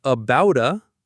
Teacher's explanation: About a becomes about a. The T becomes a flap T.